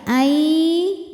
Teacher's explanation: Yuridullahu ay ada idgham bi gunnah karena nun sukun menghadapi huruf ya, maka bunyi nun masuk ke ya